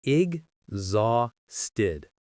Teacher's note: The stress, the most powerful part of the word is on the second syllable, zah.